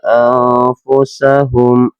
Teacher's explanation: nun sukun bertemu dengan fa dibacanya ang, dinamakan dalam ilmu tajwid dinamakan ikhfa hakiki.